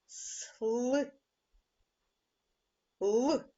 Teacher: наступний звук л звук приголосний твердий дзвінкий